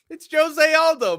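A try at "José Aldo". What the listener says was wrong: Yeah, but he's Brazilian. You say the J.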